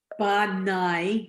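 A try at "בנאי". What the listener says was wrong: Yes.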